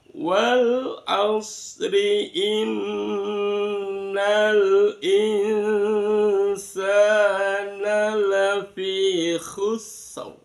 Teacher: Nada datar naik dan datar